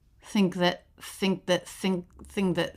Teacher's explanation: the n in the word think is actually the NG consonant which is written in the International Phonetic Alphabet with this symbol · I'm just really not hearing much of a k